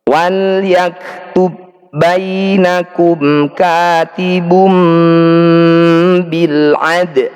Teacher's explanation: Ba sukun bertemu ba, ini disebut bacaan idgham mutamatsilain, dua huruf yang sama persis. Cara bacanya bunyi ba yang pertama ini langsung kita masukkan pada huruf kedua.